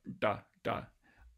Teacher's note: you're basically curling your tongue tip back to this post-alveolar place of articulation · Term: retroflex stops